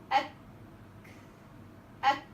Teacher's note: الكاف بتاعتي صوتها هيتحبس في الاول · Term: حرف الكاف